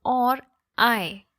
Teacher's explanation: Or is unaccented, I is accented. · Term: iambic feat